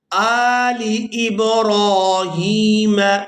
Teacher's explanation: یہاں حمزہ کے اوپر کھڑی زبر ہے تو اس کو کھینچ کر ادا کریں گے، اور لام کو ہم نے بغیر کھینچے ادا کرنا ہے۔ یہاں پر اکثر لوگ غلطی کرتے ہیں کہ لام کو بھی کھینچ کر ادا کر دیتے ہیں، تو یہاں ہم لام کو بغیر کھینچے ادا کریں گے۔